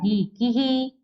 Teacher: छोटी ई की मात्रा होती है, मान लो की में है और विसर्ग है तो क्या हो जाएगा? ही, की ही, ऐसा पढ़ा जाएगा।